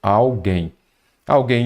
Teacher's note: como a sílaba tônica é a última, você já vai se lembrar de que, de fato, ela é oxítona, pois é uma palavra oxítona terminada em "em".